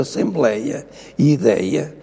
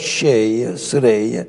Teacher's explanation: a Assembleia e Ideia, por exemplo, têm o timbre da vogal aberta, mas cheia, sereia, têm fechada